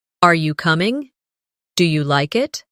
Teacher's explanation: In English, our voice usually rises at the end of a yes or no question. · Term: rising tone